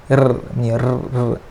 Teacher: huruf ra ni kena sebut dia kena ada takrir sikit. R. Tapi sekali saja dia punya ulangan dia tu.